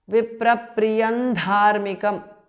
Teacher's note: The Anuswara changes to Na, the nasal of Tavarga.